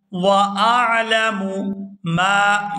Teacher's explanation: मीम के साथ अलिफ मद्दा है तो इसको खींच कर अदा करेंगे